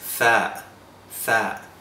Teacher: Now we arrive at the letter tha, tha. Tha is pronounced with the tongue between your teeth, sometimes behind your top row of teeth.